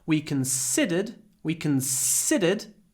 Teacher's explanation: remember the second syllable is stressed so we get a long s sound